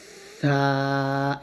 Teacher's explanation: তারপর হচ্ছে সা। সা বলতে হবে জিহ্বার আগা সামনের উপরের 2 দাঁতের আগার সঙ্গে লাগিয়ে। এখানে একটা জিনিস খেয়াল করবেন, সা যখন উচ্চারণ করবেন আপনার জিহ্বাটা যেন কোনোভাবে নিচের দাঁতে অথবা উপরের তালুতে যেন না লাগে, এটা একটু সতর্ক থাকতে হবে।